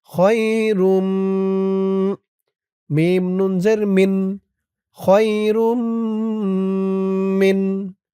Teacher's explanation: খ ইয়া জবর খই, র মিম দুই পেশ রুম, ঈদগামে বাগুন্নাহ। তানবিনের পরে ঈদগামে বাগুন্নার 4 হরফের এক হরফ মিম আসছে তাসদীদ সহকারে, গুন্না হবে